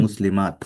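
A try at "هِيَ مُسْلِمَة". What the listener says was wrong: হিয়া মুসলিমাহ, বলে শেষ করতে হবে কিন্তু, হ্যাঁ, মুসলিমাত না কিন্তু, মুসলিমাহ। হায়ের মতো একটা উচ্চারণ হবে, হিয়া মুসলিমাহ।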